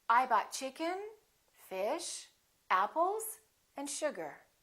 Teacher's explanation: have a rising intonation I bought chicken fish apples and sugar the last one will have falling intonation so we go up up up down